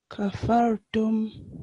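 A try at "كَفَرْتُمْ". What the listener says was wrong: So just make it a little bit thicker. Kafartum.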